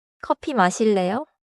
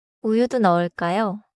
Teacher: Notice 커피 stays flat on 어, and 우유 keeps the round 우.